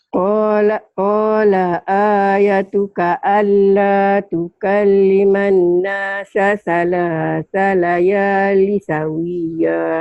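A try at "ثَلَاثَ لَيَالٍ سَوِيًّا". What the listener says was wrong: Ada tanwin di situ. Salayalin sawiyya ikhfa, ditahan.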